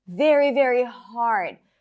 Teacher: 'HARD' is more stressed than the 'VERY' and the 'VERY', right?